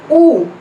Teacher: 8th one is ऊ, ऊ की छोटी साउंड है, ये centralised back just अबाउ half close and it is also rounded vowel